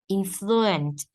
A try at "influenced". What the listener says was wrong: Influenced. There's a D.